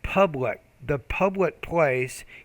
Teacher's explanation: you need to pronounce your P with more aspiration.